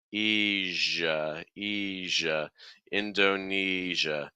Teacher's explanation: So it's not j, it's a smoother sound. The air needs to keep flowing through the mouth. Don't block it completely.